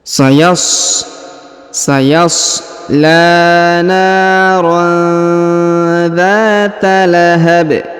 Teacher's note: ayat atau di ujung bacaan maka dia Kita sukunkan ya dan karena disukunkan maka dibaca pantul atau diqolqolahkan